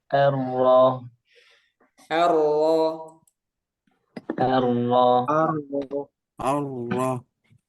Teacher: takrinnya ada getarannya ada namun tidak berlebihan dan juga tidak sampai hilang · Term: takrir